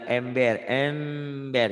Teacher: kalau nun mati ketemu ba bunyinya iqlab ada m-nya